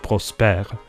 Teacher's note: prosperu becomes French Prosper which lost its final syllable